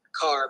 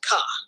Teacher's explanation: in some English-speaking communities like in parts of New York people might drop the r at the end of words car becomes C this variation depends on social factors like age